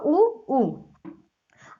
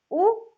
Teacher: ये जो होंठ की स्थिति है वो क्या है, गोलाकार हो जा रही है। ऊ तो आप समझ जाएंगे ये होंठ से है।